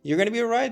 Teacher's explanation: We don't pop that T at the end for right.